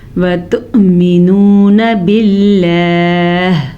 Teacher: حمزہ پہ جھٹکا پیدا ہو رہا ہے. حمزہ ساکن سے کے اوپر جب بھی حمزہ کے اوپر ساکن آ جائے تو جھٹکے کے ساتھ حمزہ پڑھا جاتا ہے.